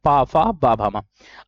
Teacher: पा वर्ग का उच्चारण स्थान ओठों से आ रहा होता है। · पा वर्ग का उचा स्थान ओठों से आ रहा होता है अगर बिना ओठ के आप इन शब्दों का उच्चारण नहीं कर